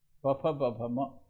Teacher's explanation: That's on the lips. And they are called bilabial sounds because they are produced on the lips